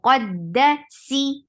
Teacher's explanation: سی sound بہت چھوٹی ہے اور باریک ہے کیونکہ اس کے نیچے کسرہ ہے.